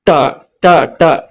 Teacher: ಮಡಿಚಿದ ನಾಲಿಗೆಯಿಂದ ಟ ಹೇಳ್ಬೇಕಾದ್ರೆ ನಾಲಿಗೆ ಟ ಟ ಟ ಸ್ವಲ್ಪ ಫೋಲ್ಡ್ ಆಗುತ್ತೆ